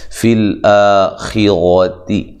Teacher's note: الف مدہ کے قائم مقام مد اصلی ہے، اس کو ایک الف کی مقدار کے برابر لمبا کریں گے